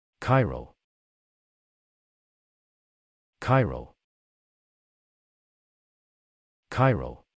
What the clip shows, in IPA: ˈkaɪ rəl